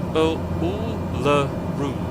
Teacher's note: So the middle U is, usually written up with the pronunciation guide of a schwa, so it's just a sound. So Uluru, and yes, most of the emphasis on the third syllable